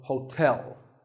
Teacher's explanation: there are two syllables ho and like the english word tell as in tell me the stress is on the second syllable